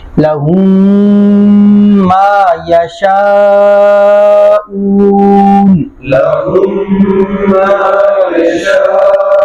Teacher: اس میں غنہ ہوتا ہے اور غنہ کی مقدار ایک الف ہے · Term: ادغام شفوی